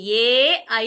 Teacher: కంట్యః తాలవ్యః ఈ రెండు స్థానాలు రెండు కలిపి వస్తుంది కాబట్టి దాన్ని కంఠతాలవ్యః అంటారు